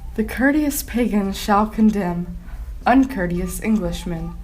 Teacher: a metrical foot consisting of two lightly emphasized syllables is followed by one heavily emphasized syllable